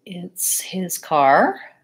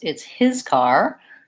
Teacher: if I change the stress it's his car then I'm highlighting the ownership being more important and I'm trying to tell you it's not someone else's car